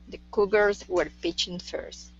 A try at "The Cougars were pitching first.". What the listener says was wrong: Okay, watch that R on were instead of were pitching. Were pitching. The Cougars were pitching first.